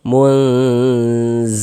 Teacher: Lun dibaca panjang. Ini namanya adalah mad arid li sukun. Namun pada awalnya dia namanya mad tabi'i. · Kita baca samar dan berdengung. Munzilun. Lun dibaca panjang. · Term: ikhfa hakiki awsat